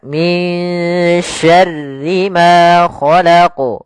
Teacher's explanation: Kemudian pada lafal ra, syarri. Rinya tipis, bukan syarri, tapi dia min syarri ma khalaq. Kemudian pada lafal ma ada hukum tajwid berupa mad tabi'i, yaitu ditandai dengan fathah bertemu dengan alif panjangnya 2 harakat.